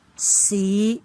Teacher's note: This is rising tone, but it rises from the lower level of the pitch range to the middle level. That's why we use a rising tone mark above I and put H after that in Yale system.